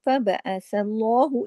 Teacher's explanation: अल्लाह के नाम में लाम को हैवी करना है, मोटा करके पढ़ना है